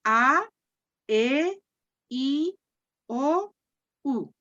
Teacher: Vamos de la A, que es la vocal más abierta, a la U, que es la vocal más cerrada.